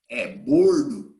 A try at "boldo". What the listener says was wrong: Boldo. With L.